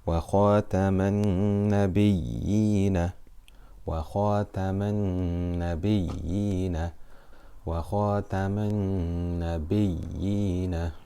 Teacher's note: Many people would just consider this to be mad asli because ultimately we have here a kasra followed by a ya sakina, so we know this is stretched for two harakat. But when it's ya mushaddada, so ya with a shadda on it followed by a ya sakina, it is specifically called mad al-tamkeen.